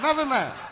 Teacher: you're making the F sound for a TH sound